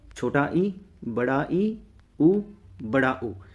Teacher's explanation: इसका मतलब है क्लोज यानी कि बंद। जिन स्वरों के उच्चारण में मुख द्वार लगभग बंद रहता है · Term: संवृत स्वर